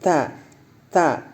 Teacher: huruf ta memang huruf hams tapi keluarnya sedikit saja